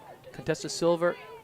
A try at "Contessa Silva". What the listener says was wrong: You said Contessa Silver. Contessa Silva.